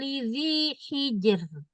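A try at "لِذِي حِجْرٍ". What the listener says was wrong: Bukan ji. Iya, karena keluarnya kol-kolah jim itu kan bunyinya je, gitu loh. Jadi jangan jadi hijir, jadi kayak ji, enggak, tetap je, cuman tinggal ditambahin sama Nah, jangan jadi hijri. Sebenarnya ada yang jadi gini, lidhi hijir. Tapi jadi hijirnya sempurna dulu. Mulutnya memang ke Je-nya je, tetap ya, jangan jadi ji. Pantulannya tetap sempurna maksudnya.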